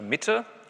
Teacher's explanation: Ein sogenannter ambisyllabischer Konsonant, einer, der in zwei Silben steht. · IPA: m ɪ t ə